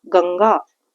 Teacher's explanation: अनुस्वार बोलते समय इनकी ध्वनि या उच्चारण करते समय इनकी ध्वनि नाक से निकलती है।